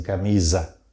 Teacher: O fonema é Z, o som é de Z, porque fica entre duas vogais, mas é um S.